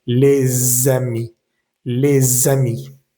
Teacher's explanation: Por ejemplo, les amis, es decir, les amis, las últimas S no deberían pronunciarse, pero ya cuando leemos toda la frase en conjunto, entonces la S de la palabra les sí se va a leer, va a vibrar y va a unirse con la siguiente palabra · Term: liaison